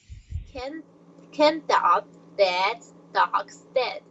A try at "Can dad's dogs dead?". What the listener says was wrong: Okay, you sometimes miss the letter S. Can dad's dog's dead?